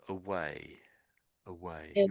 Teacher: So I gave that word a bit of extra emphasis by making it slightly separate.